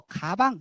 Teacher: 뒤쪽에 있는 그 설배 부분이 위에 있는 연구개 부분하고 붙었다가 살짝 열리면서 떨어지는 그 과정이 느껴질 겁니다. 그러면서 장애가 생겨요. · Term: 기역